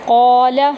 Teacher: قاف کو پر کریں گے، 1 الف کے برابر لمبا کریں گے